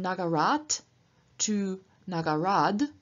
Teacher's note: becomes voiced before another voiced sound so t changes into d